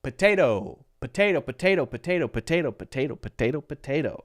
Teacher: we're changing this second T to a light D